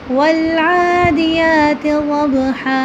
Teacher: یہاں پر 2 زبر ہیں۔ 2 زبر پر جب ہم وقف کریں گے تو اس کو اس کے ساتھ الف کو ملا کے پڑھیں گے اور اس کو ساکن کریں گے۔